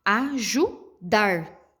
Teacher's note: o dar, ele puxa, né? É a sílaba mais forte, ele puxa.